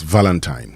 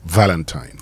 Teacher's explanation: But of course the stress is on the first syllable.